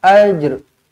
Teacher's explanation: Kalau kita nak matikan dekat sini, kita kena matikan jim, lantunkan jim, qalqalah. Lepas tu ada huruf ra di hujungnya. Jangan mati sampai jim je.